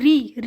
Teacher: अब री का होता है मूर्धन्य या मूर्धा से।